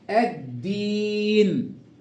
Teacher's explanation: اضغمت اللام في الدال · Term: اللام الشمسيه